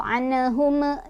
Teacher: Ini ada izhar syafawi karena mim sukun bertemu dengan wawu. Cara bacanya mim sukunnya dibaca jelas juga ya, jangan mantul.